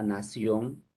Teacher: La última N es velar, o sea, se produce cuando se junta el postdorso de la lengua con el velo del paladar.